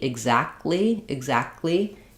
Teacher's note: You're going to hear an unreleased K sound, and I'm going to release right into the L.